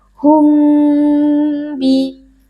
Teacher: sukun yang bertemu dengan huruf ba DII berlaku hukum Ikhfa Syafawi cara membacanya adalah dengan membaca huruf mim sukun dengan dengung yang dipanjangkan